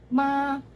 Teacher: konsonan sengawan atau nasal, bilabial, dan bersuara